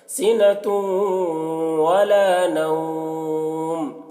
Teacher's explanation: تنوین کو واو سے ملا کر غنہ کے ساتھ پڑھیں گے. اس کو ادغام ناقص کہتے ہیں.